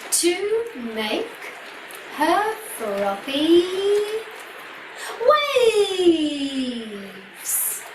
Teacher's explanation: you have a little dramatic pause just before you say the very last word, waves